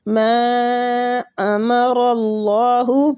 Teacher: کے آگے وہ مد بھی ہو رہا ہے، ما امر اللہ، ماں کے آگے اوپر جو مد ہے اس مد کو مد جائز منفصل کہتے ہیں، اس کی 3 سے 4 الف کھینچنے کی مقدار ہے